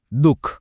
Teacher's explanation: દુ પછી એકદમ હળવો હ જેવો ઉચ્ચાર થાય છે અને એ બતાવવા માટે જ વિસર્ગનો ઉપયોગ થાય છે એના વગર